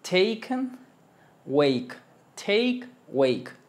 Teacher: es una con boca de e es una entre media a y e